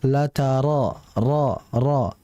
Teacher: Ra ini huruf yang keluar dari lidah, sehingga tidak ada unsur dia itu pengucapannya lewat bibir. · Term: huruf ra